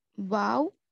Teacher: واو یہ ہونٹوں کو گول کرنے سے واو ادا ہوتا ہے